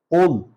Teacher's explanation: یہ قاف پڑھی جاتی ہے، اقصی حلق سے نکلتی ہے، بھاری پڑھی جاتی ہے